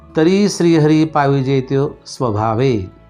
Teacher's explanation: ऱ्हस्व आहे म्हणून तिथं लघु आहे. री हा दीर्घ आहे, जास्त उच्चार होतो म्हणजे तिथं गुरु आहे.